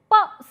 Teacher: you try to produce pop sound so you will see that your upper lip and the lower lip is coming in contact with each other and as a result the air is being obstructed it is being stopped for a while and then you suddenly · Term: bilabial